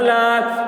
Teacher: کھڑا زبر برابر ہوتا ہے الف مدہ کے، اس لیے کھڑا زبر کو ایک الف کے برابر کھینچ کر پڑھیں گے